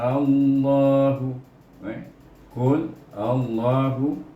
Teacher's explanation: Allah itu A tu panjang, Allah tu 2 harakat